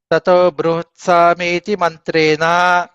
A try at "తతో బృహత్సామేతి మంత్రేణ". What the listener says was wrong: మంచి